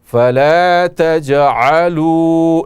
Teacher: تجعلوا جیم میں قلقلہ ہوگا